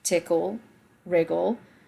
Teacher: tickle, wriggle, both have an emphasis on the first syllable